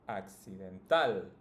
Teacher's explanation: you just need to pronounce the last one the strongest the last syllable in this case it's tal in the second word it's Nal